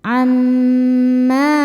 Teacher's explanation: Mim hukumnya gunnah musyaddadah karena mim bertasydid. Cara bacanya berdengung, tahan dengungannya kurang lebih 2 harokat.